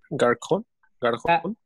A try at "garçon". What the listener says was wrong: La cerilla es ese, garzón.